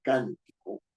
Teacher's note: la mayor fuerza de voz está en can no está en ti ni está en co